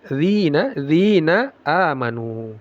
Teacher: ujung lidah yang menempel ke ujung gigi seri atas